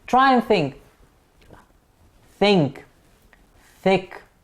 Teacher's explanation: the tip of the tongue is the active articulator and the upper front teeth are the passive articulators